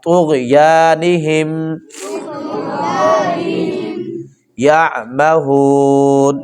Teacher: اب یہ طا ہے اس کو موٹا کر کے پڑھیں گے اور غین کو بھی موٹا کر کے پڑھیں گے